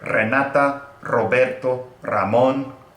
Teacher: Those are all names that start with an R, and so thus you will hear a kind of a double flap, or depends on the emphasis, a triple flap of your tongue · The long double, triple flap of your tongue.